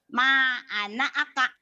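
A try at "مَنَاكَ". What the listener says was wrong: Kok anak aka? A-nya nggak. Ini jangan. bukan. Mana aka gitu. Bukan anak. Ini A-nya nggak fungsi. Benar. Mana aka. Ini kesini putus. Ini kan ma tuh kesini. Ma ini baris ini punya mim ini. Bukan ma'ana aka. A-nya nggak ada barisnya. Mana aka gitu. Mana aka. Mana aka. Mana aka.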